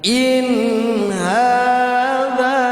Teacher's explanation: nun sukun yang menyambung huruf kerongkongan tidak didengungkan.